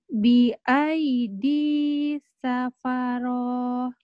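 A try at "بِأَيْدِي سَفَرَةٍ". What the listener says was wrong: Ya, ro-nya pendek ya. Tidak ada pemanjang di situ. Bi'aidi safaroh. Safaroh.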